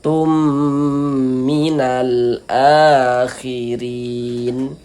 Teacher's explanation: Tum minal, minya pendek ya, tumnya yang kita panjangkan sebentar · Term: idgham bi gunnah